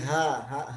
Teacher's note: ha itu halqi, bukan di dada, bukan ha nanti ha di dada, tapi di tenggorokan.